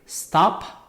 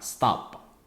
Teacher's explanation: Contohnya ini stop dengan H aspiratif